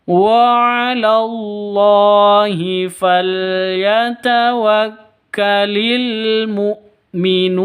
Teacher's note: falyatawakkalil pendek semua, jangan dibaca panjang, tidak ada yang dibaca panjang di sini.